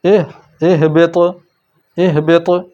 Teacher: قتلت، یہاں دیکھیں زبان جڑی رہی، اہبط، اہبط، یہ تا اور یہ تو، تا کی آواز باریک اور رکنے والی، اور تو کی آواز موٹی اور آگے چلنے والی